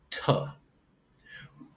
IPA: t